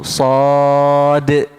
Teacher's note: Dan yang keempat, sad adalah huruf mad lazim harfi mukhaffaf. Dibaca 6 harakat tanpa idgham dan diakhiri dengan qalqalah kubra kerana sifat huruf dal yang sukun.